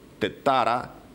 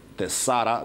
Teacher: where the Attic dialect uses the consonant T, Ionic dialect uses the consonant S.